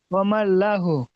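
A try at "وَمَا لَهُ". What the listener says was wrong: লা কেন বললেন, আগে তো যাবার এসছে। অমাল লহু। জি, আলিফটাকে ওখানে ছেড়ে দিতে হবে।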